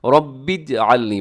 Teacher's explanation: رب اجعلنی، با کو جیم کے ساتھ ملانا ہے